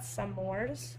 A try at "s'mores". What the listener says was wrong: She's pronouncing the apostrophe.